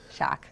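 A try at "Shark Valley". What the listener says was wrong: Shark. There's an R in there.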